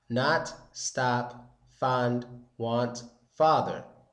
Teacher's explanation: it's kind of similar to an open a but your mouth isn't open that much and it's much deeper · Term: the ah sound